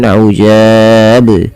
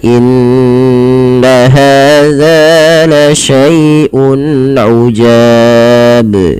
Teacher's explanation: kesalahan di dalam membaca qalqalah ini adalah tidak memantulkan huruf qalqalahnya, yaitu di sini huruf ba. Misalkan ujab, harusnya dipantulkan ujab ya.